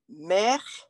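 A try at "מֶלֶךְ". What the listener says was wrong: Well, there's no way that they, a word would start with a mem with no vowel. So just make it a me, like a short M. Mela.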